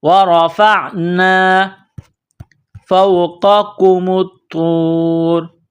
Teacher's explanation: ہے، وَرَفَعْنَا فَوْقَكُمُ الطُّورَ. فا کو واو کے ساتھ ملانا ہے، قاف کو موٹا کرنا ہے، اس کاف کو باریک کرنا ہے